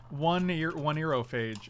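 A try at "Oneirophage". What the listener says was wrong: I think the H is silent, though. One Iroh Page.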